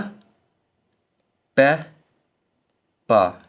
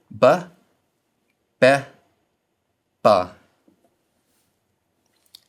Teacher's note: The hatiff pathic is pronounced like the a in amuse, a very short vowel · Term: reduced